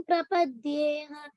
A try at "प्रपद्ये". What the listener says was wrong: Prapadye, only ha is not there, only prapadye.